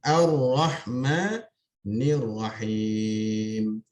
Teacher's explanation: Ini disebut sebagai alif lam syamsiyah ataupun disebut dengan idgham syamsi, ya, di mana lam itu dimasukkan ke dalam huruf ra.